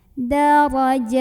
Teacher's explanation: Ra-nya ini dibunyikan secara tafkhim karena ra berbaris dan barisnya di atas. Maka bacanya tebal ya, pangkal lidah kita dinaikkan.